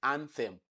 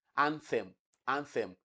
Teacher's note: anthem that is voiceless uh dental fricative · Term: voiceless dental fricative